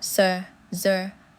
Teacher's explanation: The tongue blade makes contact with the teeth ridge for sir, zur, and the shur and zhur sounds.